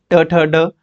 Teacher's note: मुर्धा ट ठ ड इसमें मुर्धन्य मुर्धा के साथ जीभ लगती है